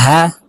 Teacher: এই হার উচ্চারণ হলকের শুরু থেকে হবে। এই হার মাখরাজ হলকের শুরু থেকে। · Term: ছোট হা